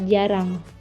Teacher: Selanjutnya konsonan getar, yakni bunyi yang dihasilkan dengan mengartikulasikan lidah pada lengkung kaki gigi, kemudian dilepaskan secepatnya dan diartikulasikan lagi seperti fonem R pada kata jarang.